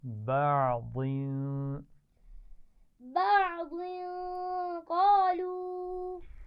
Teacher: عین پر قلقلہ نہیں ہونا چاہیے